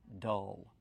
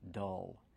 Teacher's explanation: Use the short sound like cup and up. Dull. Plus the dark L.